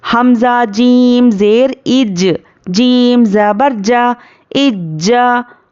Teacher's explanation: حمزہ جیم زبر اج، اب یہاں پر کیا ہے، یہ حروف خلخلہ ہے تو ہم یہاں پر خلخلہ کریں گے، ہجے کرنے میں خلخلہ ہوگا، لیکن روانی میں خلخلہ بالکل بھی نہیں کریں گے۔